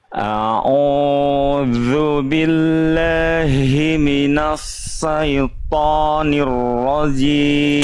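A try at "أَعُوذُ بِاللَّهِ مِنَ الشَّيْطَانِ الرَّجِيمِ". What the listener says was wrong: Oke, PR-nya di huruf shin. Ya, masih jadi sin.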